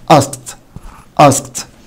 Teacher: وساعات عشان يسهل النطق يخفف خالص من حرف الكه او صوت الكه